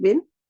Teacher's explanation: You make the sound of qalqala on ba, and you do not make the sound of the noon in the bin.